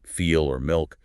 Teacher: Dark L comes after vowels or before consonants like feel or milk. Tip still touches the ridge, but the back of your tongue also pulls up and back towards the soft pallet. Gives a darker, deeper sound.